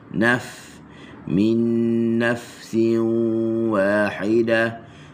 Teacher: huruf nun na hujung lidah di langit